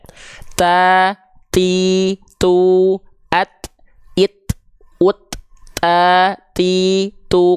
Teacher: kedengaran enggak ada percikan nafasnya